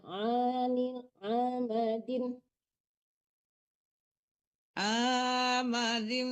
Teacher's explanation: Diperjelas di tengah-tengah tenggorokan kalau makharijul ain ya.